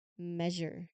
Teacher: It tells you which syllable in the word is emphasized or stressed. In measure, the stress is on the first syllable, me. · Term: primary stress mark, primary stress